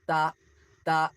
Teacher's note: The tip of the tongue between the teeth.